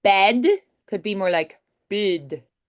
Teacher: And also tensing the vowels. The e sound can be really prolonged and tense similar to an i sound.